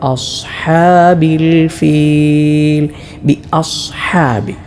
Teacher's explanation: സ്വാദ് ഉച്ചരിക്കുമ്പോൾ ഇത്ബാ അഥവാ നാവിന്റെ മധ്യം അല്ലെങ്കിൽ ഏതെങ്കിലും ഒരു ഭാഗം മേലെ അണ്ണാക്കോട് ചേരുക അതോടൊപ്പം ഇസ്തല നാവിന്റെ അം അങ്ങറ്റം ഉയരുക ഈ രണ്ട് സിഫത്തുകളും കൊടുക്കണം ആ